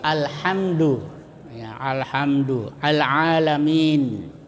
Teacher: kalau izhar qamariyah itu dibaca terang, ya, lamnya dibaca terang.